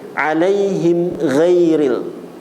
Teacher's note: Gin kalau Nun atau tanwin bertemu dengan Gin dia izhar halqi kalau mim bertemu dengan ghin apa selain huruf ba dan mim izhar syafawi dibaca jelas di bibir